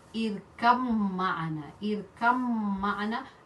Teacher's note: Ba, it comes from the lips. The area, the destination of ba is lips, and then mim is still coming from the lips, so they're neighbors. The makhraj is the same.